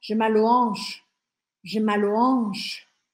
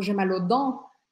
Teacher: se for no plural, eu vou usar esse AUX sem falar o X de fato